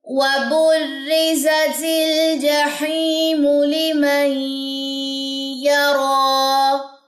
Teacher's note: حمزہ وصلی جو ہے وہ درمیان میں حذف ہو جائے گا، وہ پڑھا نہیں جائے گا۔ · اور با کی جو پیش ہے وہ اس جزم والے را کے ساتھ ملے گی، وَبُرِّزَ، یہ را باریک ہوگا، زا کے اندر سیٹی ہوگی، اور زا کی زبر آپ نے لمبی نہیں کرنی، لام کی جزم پہ آپ نے جھٹکا نہیں دینا، تل، یہ غلط ہو جائے گا، ٹھیک ہے۔